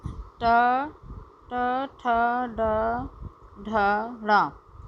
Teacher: हमारी जीभ ट, ठ, ड, ढ, ण बोलते समय मूर्धा को स्पर्श करती है